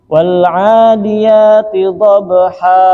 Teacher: Jadi membacanya tidak terlalu panjang seperti mat tabi'i biasa. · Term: mat iwad